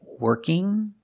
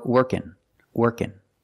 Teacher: we have two pronunciations for ING I can say working or working working with just the n Sound